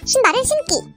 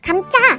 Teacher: 기역, 디귿, 지읒은 원래 예사소리지만 모두 된소리가 되었습니다